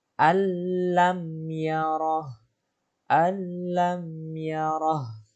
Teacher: memasukkan bacaan nun sukun atau tanwin tersebut ke huruf berikutnya. Kemudian tidak didengungkan dan tidak digunnah, ya, atau tidak dilamakan bacaannya. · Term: idgham bila gunnah